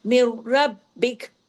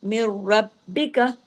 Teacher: र heavy भी हो रहा है। र डबल भी हो रहा है और बा बारीक और बा भी डबल। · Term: इदगाम ताम बिला हुना